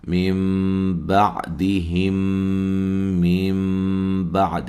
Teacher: نون ساکن کا اقلاب ہو رہا ہے، نون کو میم سے بدل کے پڑھیں گے